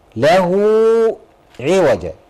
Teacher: مد صله صغرى حركتين